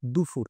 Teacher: অল্পপ্রাণকে মহাপ্রাণ করে উচ্চারণ করছে